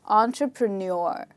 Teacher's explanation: Okay, so in this word, again, we have 4 syllables and not 5. And in this word, the stressed syllable is the last part of the word